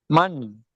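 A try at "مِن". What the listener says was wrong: மா இல்ல மென்.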